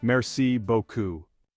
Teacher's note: Remember to pronounce the R in merci and beaucoup with that slight guttural sound